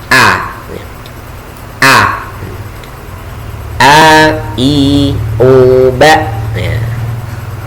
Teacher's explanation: huruf hamzah ini keluarnya dari tenggorokan bagian belakang di bawah